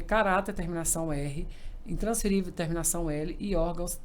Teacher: E, gente, e todas têm a sílaba mais forte na penúltima. Se a sílaba mais forte está localizada na penúltima, elas são paroxítonas.